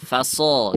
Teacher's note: tebalnya Apakah di setiap saat Ustaz Iya dia selalu tebal makanya huruf Shad ini selain tafkhim Dia juga itbaqq ya jadi selalu tebal